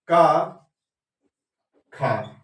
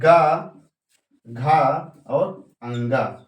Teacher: पहला दूसरा क्या होता है, अघोष, और तीसरा चौथा पांचवा क्या होता है, साघोष